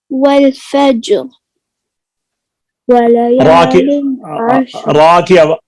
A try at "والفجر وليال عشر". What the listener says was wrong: را کی آواز ہے، والفجر۔